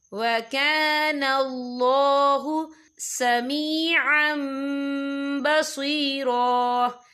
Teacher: یا دیکھیں سمیعًا، عم عین کے پر تنوین ہے، تنوین کے بعد جو ہے با آ رہا ہے، تو یہاں پر انقلاب ہوگا یعنی تبدیلی ہوگی. تو ہم یہاں میم کا تلفظ کریں گے اور ہم اسے غنّے کے ساتھ پڑھیں گے